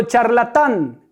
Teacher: ¿Cuál es la sílaba tónica? La última.